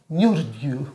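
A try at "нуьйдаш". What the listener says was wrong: Не, R там нет. Nude you, да. Nude you.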